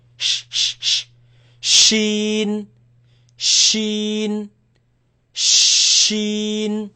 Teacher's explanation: feel it in the middle of the tongue.